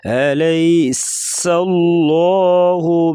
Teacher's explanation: لفظ اللہ کے لام سے پہلے زبر آ گیا تو لام کو پور پڑے گی موٹا